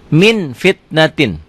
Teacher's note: bila nun mati atau tanwin bertemu dengan Fa bunyinya berubah menjadi mm akan tetapi mutlak tidak tertutup rapat masih ada Uda yang keluar ketika membacanya ikhfa iya ya Min